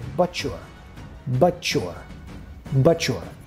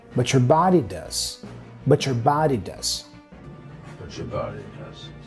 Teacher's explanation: This combination, T plus Y, sounds like ch, ch.